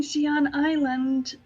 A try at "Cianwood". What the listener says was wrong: Cianwood. It's pronounced Cianwood, for the record. I didn't hear the wood part.